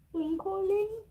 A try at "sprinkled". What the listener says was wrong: Wait. It's not ing. It's ed.